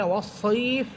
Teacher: দুই দাঁতের আগা নিচের ঠোটের পেটের মাঝখানে লাগবে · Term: মাখরাজ